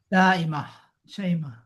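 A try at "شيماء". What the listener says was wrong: Syaima. Nggak pakai tak marbut itu, Pak. Syaima.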